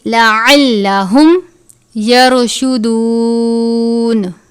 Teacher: را ساکن ہے، را کو پر پڑھیں گے